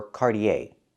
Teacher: You can say Cartier or Cardier. The last vowel is the long a sound like day and say. Not e, not cardier, but cardier.